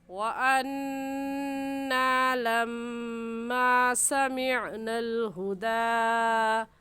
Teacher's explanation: वान्ना में नून मुशद्दद है और नून मुशद्दद पर गुन्ना होता है, इस वजह से गुन्ना करके पढ़ेंगे। लम्मा में मीम मुशद्दद आ गया, मीम मुशद्दद पर भी गुन्ना होता है तो गुन्ना करेंगे और इन दोनों लफ्ज़ों को ऐसे पढ़ेंगे वअन्ना लम्मा समिअनल हुदा।